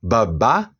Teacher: a primeira sílaba ba tem um som fraco, baixo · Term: entonação baixa